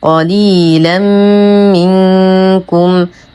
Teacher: قليلا منكم تنوين بعده حرف الميم. الحكم إدغام كامل مع غنى أكمل ما تكون